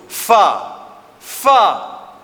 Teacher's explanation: gigi atas kena kat bibir bawah